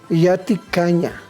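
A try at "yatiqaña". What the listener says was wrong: No, yatecaña. Yatecaña. No ca, sino es como una parte glotal en la garganta. Yatecaña.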